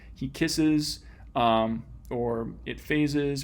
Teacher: there's another extra little syllable involving the vowel schwa here that splits up those two sibilant sounds to make them both easier to say and to hear, presumably.